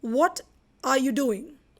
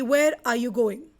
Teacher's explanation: WH से जितने भी questions शुरू होते हैं, like what, when, where, why, who, ये सभी questions आपको एक राइजिंग टोन में लेकर जाने हैं, and then there is a falling tone or fall towards the end